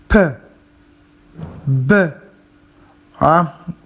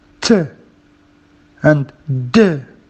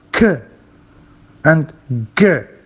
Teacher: They release that, air that makes some sort of explosion, though soft. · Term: Plosives